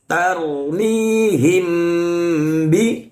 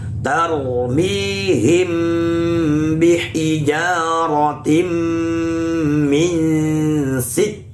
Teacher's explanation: Tarmihim bi. Nah, him karena mim sukun bertemu ba, hukumnya adalah ikhfa syafawi, maka dibaca dengung yang lama